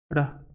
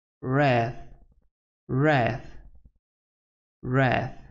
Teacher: is a voiced post-alveolar approximant consonant. We can find it in the word wrath, wrath, wrath. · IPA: /r/